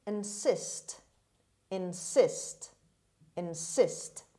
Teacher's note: The stress is on the second syllable on s sound. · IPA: /ɪnˈsɪst/